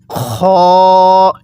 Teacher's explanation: এই খ টা উচ্চারণের সময় আমরা যেখানে কুলি করার সময় গড়গড়া করি সেখান থেকে উচ্চারণ করব